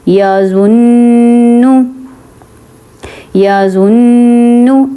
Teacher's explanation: اب میں نے کیا کیا، غنہ میں کیا ہوتا ہے کہ ناک میں آواز نکالتے ہیں. ناک میں آواز نکالی میں نے، ناک میں آواز لے کے گئی، اور جو اب میری ٹنگ تھی وہ اوپر تالو کے ساتھ ٹچ ہوئی